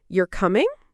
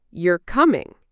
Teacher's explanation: If your voice goes up at the end, it usually sounds like a question.